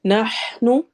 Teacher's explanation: ہا میں حروف حلقی ہے، ہا کی آواز حلق کے درمیان سے نکلے گی